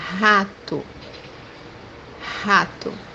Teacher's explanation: The example that we have here is the word rat, which is in Portuguese rato, rato, So this letter, when it comes by the beginning of the word or as a second letter, we can pronounce it as H in English.